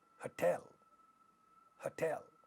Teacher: The second syllable in this word is stressed, and it happens to be that ta is at the initial position of this stressed syllable. So this is going to be aspirated.